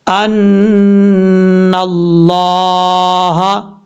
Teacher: اب یہاں پر لفظ اللہ سے پہلے نون کے اوپر زبر آ رہا ہے تو یہاں پر لفظ اللہ پر پڑھا جائے گا، یعنی ہیوی ساؤنڈ کے ساتھ پڑھا جائے گا، فل ماؤتھ